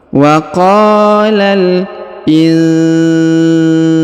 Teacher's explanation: Huruf nun sukun ya bertemu huruf sa, maka didengungkan dan disamarkan. Yang ini ya, ini nun sukun, ini huruf sa.